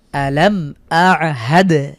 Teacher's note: এখানে মিম সাকিনের পরে হামজা হয়েছে গুন্না ছাড়া স্পষ্ট করে পড়বো আলামদ শেষে দালের উপরে সুকুন থাকার কারণে কলকলা করে পড়ছি এরপরে